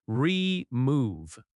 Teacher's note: The word remove has stress on the second syllable.